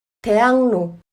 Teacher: 받침 기역은 그로 발음되고 리을은 르로 발음되지 않고 느로 발음합니다. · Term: 비음화